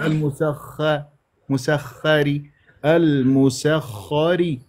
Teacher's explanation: الخاء مشدده راح يكون عندي خاء ساكنه ثم خاء مفتوحه الخاء المفتوحه راح انا افخمها